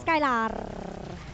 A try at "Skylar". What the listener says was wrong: Nggak R gitu.